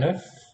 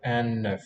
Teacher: Un œuf. Note that the N is now sounded because it links to the following vowel initial word.